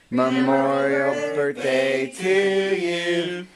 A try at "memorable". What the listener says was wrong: Dad, you're saying memorial.